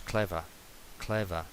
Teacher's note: Esta R es una schwa